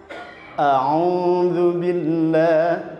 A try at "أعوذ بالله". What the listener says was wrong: Kurang dhuwur.